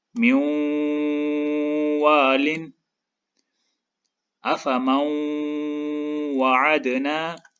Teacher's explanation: نون ساکن واو کے ساتھ شد کی وجہ سے جڑا ہوا ہے تو ادغام ہوگا، اور نون ساکن کے بعد واو ہے تو ادغام کے ساتھ غنہ بھی ہوگا